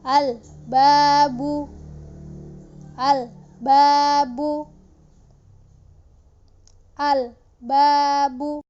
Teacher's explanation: Ketika alif lam bertemu dengan ba, maka lam sukunnya dibaca jelas ya.